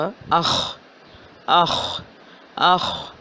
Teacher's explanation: اس کا مخرج بنتا ہے حلق کا پہلا حصہ، زبان جہاں ختم ہو رہی ہے اور حلق شروع ہو رہا ہے، یعنی کہ ادنا حلق، اور اس کو ہم حلق نمبر 1 بھی کہہ سکتے ہیں۔